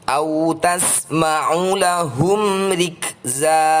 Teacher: Di sini ada huruf ro dengan tanda kasrah . Kami membacanya tipis-tipis atau tarkiq.